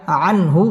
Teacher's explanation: ইজহার গুন্না ছাড়া স্পষ্ট করে পড়তে হবে